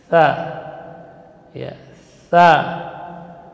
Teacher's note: Jadi mengalir udara dan suara. Akan tetapi tidak boleh berdesis.